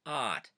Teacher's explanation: Famously we'll say the word OUT, which in English, of course, is out, but someone with a Pennsylvania Dutch accent might say that as ot